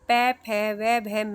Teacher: ये ओष्ठ से बोले जाते हैं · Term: ओष्ठ्य